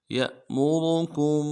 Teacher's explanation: کاف کو میم ساکن کے ساتھ ملانا ہے، میم ساکن میں غنہ کریں گے